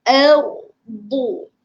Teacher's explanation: ardu jangan tebalkan, jangan bunyi o, bunyi a.